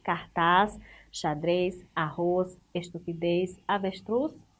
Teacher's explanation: E todas as palavras terminadas em as, es, is, os, us, elas são o quê? Oxítonas, que indicam que tem a última sílaba como a sílaba tônica, ou seja, a sílaba mais forte.